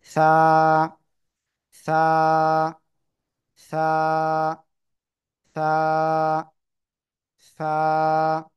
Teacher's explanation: জিহ্বার আগা সামনের উপরে দুই দাঁতের আগায় লাগাবেন, লাগিয়ে জাস্ট হালকা বাতাস বের করে উচ্চারণ করতে হবে।